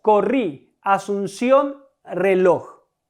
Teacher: Las sílabas tónicas en estas palabras es la última, rí, ción, lo. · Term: palabras agudas